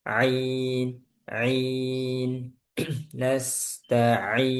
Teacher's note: di ainnya nanti ya i nanti di tengah tenggorokan